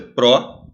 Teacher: Primeiro vem a semivogal I e depois vem a vogal A.